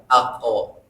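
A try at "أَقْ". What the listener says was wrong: Nggak usah dipanjangin.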